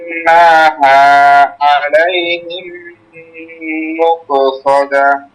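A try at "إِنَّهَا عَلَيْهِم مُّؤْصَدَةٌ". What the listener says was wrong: মুকসদা হবে না, মুসদা, মুসদা। হ্যাঁ, ইন্নাহা আলাইহিম মুসাদা।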